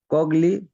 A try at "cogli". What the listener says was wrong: কগলি না, কলিয়ে। আমি গত ক্লাসে বলছি না, এই যে GLE, এটা লির উচ্চারণ হবে, এখানে গড় উচ্চারণ আনলেন কেন? কলিয়ে, কলিয়ে।